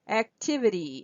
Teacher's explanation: this T goes down to a fast D activity in the Y is also secondary stress activity activity activity